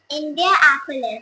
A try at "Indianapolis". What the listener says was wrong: No, you have to do like we have to join this. Indianapolis. Say Apples instead of police. Just say like apples. You say apple, right? So now just join it and say Indianapolis. Indianapolis. Indianapolis.